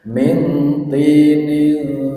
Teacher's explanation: Nun sukun ketemu dengan ta. Bacaan ikhfa. Cara membacanya samar.